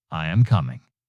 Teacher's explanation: Pitch falls at the end. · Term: falling intonation